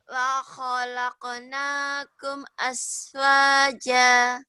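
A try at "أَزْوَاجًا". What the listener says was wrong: Ya azwaja. Z-nya jangan terlalu rapuh ya. Jangan terlalu keras, jangan terlalu rapuh ya. Wa khalaqnakum azwaja. Azwaja.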